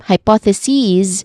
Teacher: The plural form or equivalent of it is pronounced as hypothesis with a short e vowel sound at the end and a buzzing sound as well